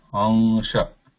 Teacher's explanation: So my tongue inside the mouth is not touching anywhere. Lips are not touching to each other. But just the sound is coming to the nose, nasal sound, pure nasal.